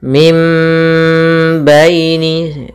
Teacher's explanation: adalah mim bukan lagi Min karena dia bertemu dengan ba maka Apabila ada nun mati bertemu dengan ba maka kita baca dengan bacaan iqlab yaitu suara nunnya diganti dengan suara mim